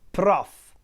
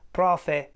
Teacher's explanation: In some areas of Italy, mainly in the center, this word prof is pronounced like profe or something like that, with a kind of a schwa at the end.